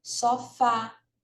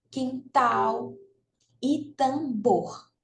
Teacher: sofá sílaba tnica é a última quintal e tambor tá então essas Três Palavrinhas aí são oxítonas onde a sílaba tônica é a última